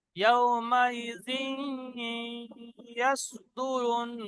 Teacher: ইয়াউমাইজিন, জালের নিচে দুজের আছে, দুজের পরে ইয়া, ইয়ার মালুনে ইউমিনের চারটে অক্ষরের মধ্যে ইয়া এসে গিয়েছে, সেজন্য ঈদগামে নাকিস হবে